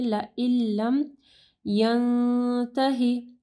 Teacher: نون ساکن کے بعد دیکھیں تا ہے، اخفاء غنہ کرنا ہے